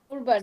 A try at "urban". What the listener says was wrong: আপু এটা কোন একজন উরবান এরিয়া বলছেন, এটা হচ্ছে আরবান এরিয়া। আরবান